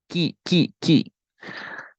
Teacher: nah jangan terlalu seperti itu cukup Maliki ki ki ki ki Jadi jangan terlalu banyak mengeluarkan hams sedikit aja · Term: huruf Kaf